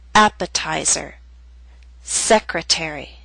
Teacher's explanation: Appetizer and secretary are longer words. They have both primary and secondary stress. Primary stress is at the beginning of these words. · Primary stress is at the beginning of these words, but the T still falls on a stressed syllable. It's secondary stress, a little weaker but still stressed.